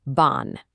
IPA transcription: ɔ̃